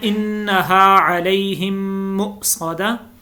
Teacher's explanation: انہا نون کے اوپر غنہ کرنا ہے، علیہم کے اوپر بھی غنہ ہے